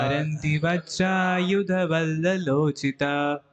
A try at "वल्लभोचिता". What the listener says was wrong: वल्ललो नहीं, वल्लभो होना चाहिए। गलत नहीं है, वल्लभोचिता। वल्लोल, वल्लोलो कहाँ हो गया?